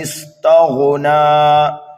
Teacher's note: تغنا اگر وقف کریں گے تو نون کو کھینچیں گے ایک الف کے برابر